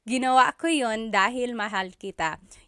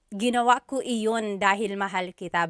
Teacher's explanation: You might hear me saying yun, as if there's no I, and that's commonly how it's pronounced. You might hear people say, ginawa ko iyon dahil mahal kita, but usually the letter I sound is dropped.